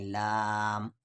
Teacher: اب یہاں پر اسے الگ دیکھیں، الف لام کو ہم کھینچ رہے ہیں تو یہاں پر الف مدہ کے بعد میم ہے اور میم پہ جزم ہے، تو حروف مدہ کے بعد جزم آ گیا، تو یعنی اس لام کو ہم 5 سے 6 الف کے برابر کھینچیں گے